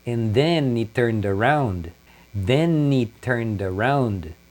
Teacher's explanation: O he, eles tiram o H e a emenda com a palavra anterior.